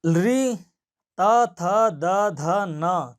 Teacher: इन वर्णों का उच्चारण स्थान दंत है, जीभ दांत के साथ टकरा रही है